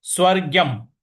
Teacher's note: स्व के बाद जो ग है उस पर थोड़ा सा हमें आघात देना है